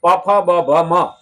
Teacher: હોઠ ભેગા થાય તો જ પ ફ બ ભ મ બોલાય